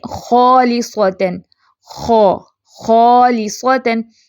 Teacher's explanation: تو یہ خا فیٹ خا ہے اور بعد میں الف مدہ ہے تو یہ الف بھی پر ہو جائے گا۔